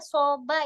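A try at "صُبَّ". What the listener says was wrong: Sobba, bukan soba, tapi sobba. Ini fi'lun mudha'af. Fi'lun mudha'af, huruf kedua dan ketiganya huruf yang sama dijadikan satu.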